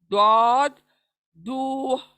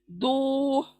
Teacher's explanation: फिर नेक्स्ट पुर पढ़ी जाने वाली दौद दौद। ये दौद यूनिक आवाज है, एक ही मखरज है इसका, वही जबान का किनारा दाढ़ों के, हमारे ऊपर के दाढ़ों के मसूड़ों को लगने से ये अदा होगा।